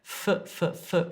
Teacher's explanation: my top teeth are on my bottom lip and I'm pushing air through